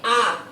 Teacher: विवृत स्वर के अंतर्गत आ आता है। अब आ बोलते समय हमारा मुख जो है पूरा खुल जाता है